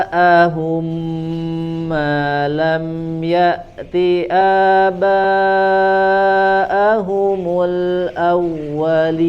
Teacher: ja-nya di situ mad wajib ya, sempurnakan panjang 4 sampai 5 harokat